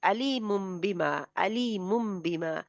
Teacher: مم ہونٹ بند ہونٹ رہیں گے اور جی فوراً ہی پھر با کہی جائے گی. · ہونٹ ہولڈ کر کے رکھنے ہیں, وہاں پہ بند رکھنے ہیں جب تک دوسرا با نہیں کہا جاتا. ٹھیک ہے, با بھی پھر جلدی کہنا ہے, اس کو میں ٹائم نہیں لگانا. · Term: اقلاب